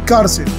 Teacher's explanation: El acento está en la penúltima sílaba, en car, entonces es grave.